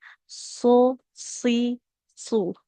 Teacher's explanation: Kalau sod sama dengan sin, ujung lidah menempel ke ujung gigi seri bawah.